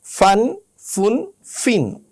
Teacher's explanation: উপরের দাঁত আর নিচের ঠোঁট লাগিয়ে ইংলিশ এফের মতো ফা উচ্চারণ করতে হয়